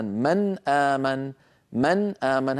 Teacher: هذه النون فيها غنة ولكن لا نزيد فيها. إذن التعريف الدقيق للإظهار: إخراج كل حرف من مخرجه من غير زيادة في الغنة.